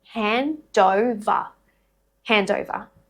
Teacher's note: the nd are a part of 2 different syllables. So the d will link to syllable 2 with the vowel sound. So it's almost like consonant to vowel linking happening in between syllables.